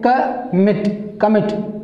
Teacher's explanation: these are two syllable and stress is on the last syllable